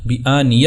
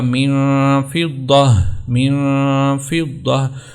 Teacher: آپ وقف کر رہے ہیں اگر وہ گول تا ہے جس طرح کہ یہاں پر ہے تو اس تا کو آپ نے ہا کے ساتھ تبدیل کر دینا